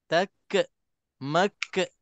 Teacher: dia ada bisikan dia ada sifat hams